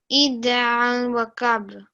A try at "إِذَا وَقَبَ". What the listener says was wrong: Tip of your tongue, put it between the very front two teeth, yeah? Dhal. So, idha. Idha waqab.